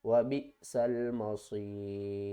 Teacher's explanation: پر بھی حمزہ ساکن ہے تو یہ ایک رول ہے کہ جب بھی حمزہ ساکن ہوگی تو اس کو جھٹکے کے ساتھ پڑھا جائے گا